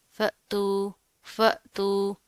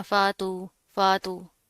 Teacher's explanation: तो ये हमजा के ऊपर जज्म आ रही है, तो इसको हम थोड़ा सा झटका देकर पढ़ेंगे, लाइट सा